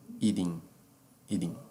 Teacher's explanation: Transforma o T num D. Tá? Como se fosse o fonema da letra D.